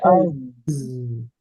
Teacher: Ini juga jahar, kemudian rokhawah. Suaranya mengalir.